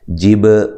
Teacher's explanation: با پہ قلقلہ کرنا ہے، ری یا مدہ ہے، اور را کو باریک پڑھنا ہے، لام کو لمبا نہیں کرنا.